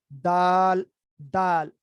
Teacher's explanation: زبان کی نوک اوپر والے جو دو دانت ہیں ان کی جڑ کے ساتھ ملتی ہے. دال جیسے تا ہے اسی طرح دا، دال کی آواز بھی وہیں سے نکلتی ہے.